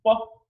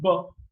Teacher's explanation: in b, you'll find there's a lot of vibration. Or if you put these two fingers loosely below the Adam's apple, below the larynx here, and if you utter this sounds pa and b, so in case of b, again you will find there's a lot of vibration.